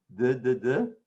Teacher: Duh is your tongue going on your palate or on your teeth. It's a dental.